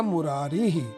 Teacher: यहां पर मुर के अंत में अ है उधर अरि का अ है दोनों अ मिलकर के एक आ बन गया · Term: दीर्घ संधि